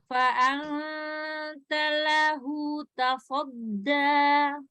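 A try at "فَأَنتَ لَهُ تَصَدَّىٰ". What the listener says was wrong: Jangan ada tasjid ya Kak. Maksudnya jangan ada double L kayak fa'anta lahu ringan.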